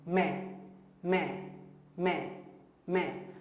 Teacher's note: So no N. N should be around 15 to 20% only nasalized